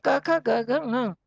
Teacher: कवर्ग कहेंगे तो वो सारे क ख ग घ ङ, और इसमें गले से ङ में गले और नाक दोनों होते हैं, पर पहले गले से आवाज निकालते हैं।